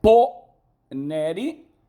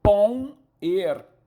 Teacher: Agora vejam que curioso, o ne cai e aquele o, ponere, ele se transforma em pon-er, o o se transforma em on, cai o N e aquele o é automaticamente nasalado. Era uma vogal oral, ponere, pon-er, houve uma nasalação.